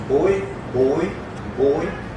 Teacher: Alofones parcialmente nasais, então são as pré-nasais